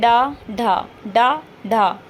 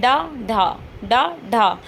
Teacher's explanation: आपकी जीभ की जो नोक है पीछे की ओर जाएगी और एकदम झटके से आगे के लिए आएगी। · इसमें जीभ की नोक तालु को कुछ दूर तक छूकर मुख द्वार को झटके से खोलती है। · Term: उत्क्षिप्त, उत्क्षिप्त व्यंजन